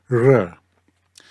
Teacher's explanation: So another unique sound is the R sound, and some people have said this is like the S in usually, but I don't think that's actually correct. It's more the R starts with the tongue in the roof of the mouth and sort of slaps down to a flat position